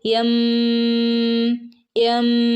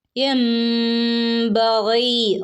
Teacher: വന്നിട്ടുള്ള നിയമം നൂനിന്റെ മുകളിൽ ഒരു ഒരു കുഞ്ഞു മീം വന്നിട്ടുണ്ട് അല്ലെ അപ്പൊ നമ്മൾ അവിടെ എൻബി എന്ന് ഓതില്ല അവിടെ എന്താക്കി നൂനിനെ മീം ആക്കി മാറ്റിമറിച്ചു അപ്പൊ എങ്ങനെ ഓതും യം യം ഇവിടെ മാറ്റിമറിക്കുക മാത്രമല്ല മണിക്കുകയും കൂടെ വേണം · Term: ഇഖ്ലാബ്